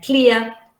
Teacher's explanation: the second element is a centering sound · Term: centering diphthongs